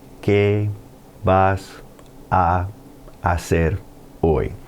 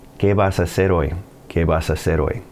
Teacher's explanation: It wasn't like, ¿qué vas a hacer hoy? When you said it all together, those two A's just meshed into a single sound.